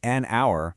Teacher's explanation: We say an hour because the H is totally silent.